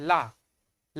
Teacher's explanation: ला बोलेंगे तो जो ला बोलेंगे हमारी जो जीभ होती है जीभ के बाए तरफ और दाहिने तरफ से जो है हल्की सी जो है जोर के साथ वायु निकल रही है ठीक है ला ला उष्मा निकल रही हल्का सा गर्म गरम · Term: पार्श्विक